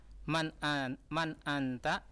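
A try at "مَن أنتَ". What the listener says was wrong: Nah, kenapa di anta? Kenapa ditekan? La, man anta?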